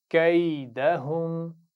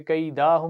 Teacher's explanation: दाल को खींचना नहीं है, जबर है ना दाल पे, कैदाहुम नहीं पढ़ना, तवज्जो से पढ़िए, कैदहुम।